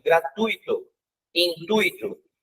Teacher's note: esse U e esse I, se não tem acento, a pronúncia dele é grudadinha. Se tivesse acento, seria separado, mas nesse caso não tem.